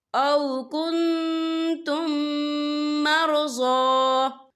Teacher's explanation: أَذًى مِّن مَّطَرٍ أَوْ كُنتُم مَّرْضَىٰ، یا دیکھیے او کنتم، یہاں میم ساکن ہے، میم ساکن کے بعد جو ہے میم مشدد والا حروف آ رہا ہے، تو یہاں پر ادغام شفوی ہوگا، ہم پچھلے میم کو اگلے میم میں مدغم کریں گے اور ہم یہاں غنہ بھی کریں گے۔